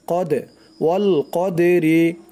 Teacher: এই দালটাও কলকলার হরফ ধাক্কা দিয়ে পড়তে হবে